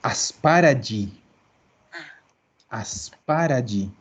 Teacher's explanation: Esto carga en la primera A